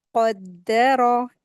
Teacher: और फिर दाल के ऊपर शद्द लगी हुई है, अच्छे से इसको अदा करेंगे। और फिर रॉ के ऊपर जबर है तो इसको हैवी करके पढ़ेंगे, और लेकिन इसको खींचेंगे नहीं